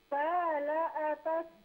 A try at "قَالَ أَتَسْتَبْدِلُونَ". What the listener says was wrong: نہیں، اس میں دیکھیں قاف کو موٹا کر کے پڑھے. قال میں حرف قاف کو موٹا کر کے پڑھے.